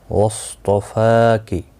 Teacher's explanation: صاد اور طا دونوں حروف مستعلیہ میں سے ہیں، پر پڑھا جائیں گے